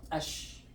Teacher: But when there is ash-shams letters, this al is not gonna be pronounced. You're gonna go to the letter right away, jump.